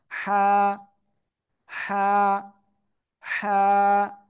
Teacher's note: এই গলার মধ্যখান হালকা চেপে হালকা মুখ দিয়ে বাতাস বের করে উচ্চারণ করতে হবে